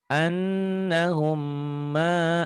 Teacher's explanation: Annahum ini idgham mimi juga ditahan. Ada gunnahnya.